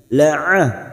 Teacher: Silakan lihat posisi makhraj pada huruf ain tersebut. Rongga tenggorokan bagian tengah lebih menyempit daripada ketika mengucapkan huruf h.